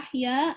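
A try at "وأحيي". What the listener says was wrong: Kok ahya sih wa uhyi?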